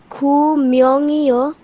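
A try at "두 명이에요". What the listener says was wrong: খু না দু?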